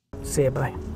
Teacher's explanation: the next word u creating a link e see you by the U is often reduced to Y rather than a full form U when it's not stressed